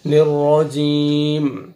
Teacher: last میں میم کا sound stop کریں گے، وقف کریں گے تو میم ساکن ہو جائے گا